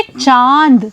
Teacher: जब आप मेरे साथ यह शब्द बोल रहे हैं तो आप पा रहे हैं कि चांद का उच्चारण करते समय चंद्र बिंदु की जो ध्वनि है वह नाक और मुंह दोनों जगह से निकल रही है